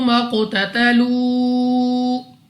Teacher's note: قاف ایک تو مستعلیہ میں سے ہے، پر پڑھنا ہے